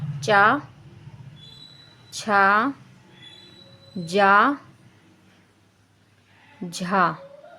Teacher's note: चा वर्ग के हमारे सारे वर्ड जो जितने भी आते हैं इसमें, वो सारे स्पर्श संघर्षी होते हैं।